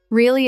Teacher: If you say really in a flat voice, it sounds bored. If you say really with energy, it sounds excited or surprised.